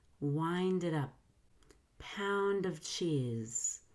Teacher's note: ND before a vowel connects D to the vowel. I'm going to link the D at the end of the first word to the vowel at the beginning of the second word. The D will be a fast D, where the tongue very lightly with minimal pressure touches the top of your mouth.